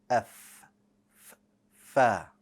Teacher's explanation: The letter Fa requires one lip, the bottom lip, and you're going to press it up against the bottom of the front 2 teeth.